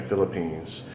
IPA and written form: ˈfɪləpiːnz (Philippines)